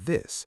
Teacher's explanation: the TH in this is voiced